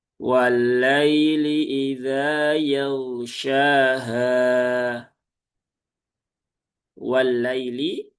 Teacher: pastikan lamnya jangan ditahan terlalu lama. Cukup tunaikan tasdidnya sewajarnya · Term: lam bertasydid